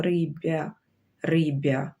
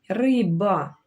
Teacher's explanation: тому що ми ж не кажемо рибя, рибя, риба, тому б твердий, приголосний, твердий.